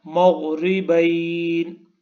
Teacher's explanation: غین کو بھی تھک ساؤنڈ میں پڑھنا ہے، یعنی کہ اس کی آواز کو موٹا کر کے پڑھنا ہے